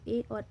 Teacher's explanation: कंठ तालु मतलब कंठ और तालु से स्पर्श करते हुए जो ध्वनि निकल रही है वो ए और ऐ है